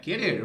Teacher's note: a sílaba forte é a última sílaba